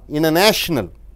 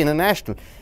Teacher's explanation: international e is a lack sobel so when lax oval comes n is followed by t the t is not pronounced